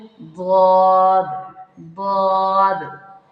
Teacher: زبان کا بغلی کنارہ جب آہستہ سے داڑھوں کو لگتا ہے، جس کی وجہ سے آواز میں طوالت پیدا ہو جاتی ہے۔ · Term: صفت استطالت